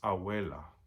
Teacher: The problem is when the B or the V are between two vowels. When it's between two vowels, the B stops being a forceful B like in English · The B between two vowels, your lips don't exactly touch together like they do with bésame or vístete